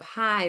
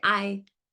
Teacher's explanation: So you're going to hear them say, for instance, instead of hi, they'll say I. There's no H there. It's deleted in the beginning of the words. They go right for the vowel.